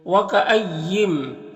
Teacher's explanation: وکأیم، یہاں پر نون ساکن کے بعد میم حروف یومن میں سے تو نون کو میم سے ملا کر غنہ کے ساتھ میں پڑھیں گے، اس کو ادغام ناقص کہتے ہیں۔